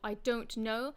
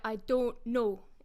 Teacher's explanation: the diphthong oh so that is pronounced much more as a monophthong